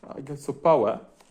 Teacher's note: Esa P no es aspirada